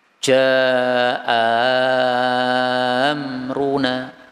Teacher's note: Hamzah yang kedua dibaca Alif maal maddil musyabbah bersama dengan mad yang panjang